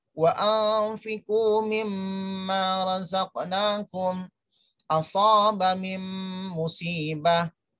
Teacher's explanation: Walaupun tidak ada tasjid yang ada dalam huruf mim, tapi sudah seakan-akan pengucapannya dalam keadaan bertasjid. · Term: idgham bi gunnah